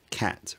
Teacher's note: That cat vowel has a higher tongue position, cat rather than cat.